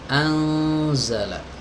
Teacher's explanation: Anzala dimasukkan ke al-khayshum ya, atau rongga hidung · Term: ikhfa